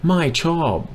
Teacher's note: my with a falling tone means no it means negative it means not okay so whatever follows that